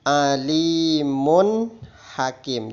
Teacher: tanwin dhomah bertemu hak maka hukumnya harus dibaca jelas atau terang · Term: Izhar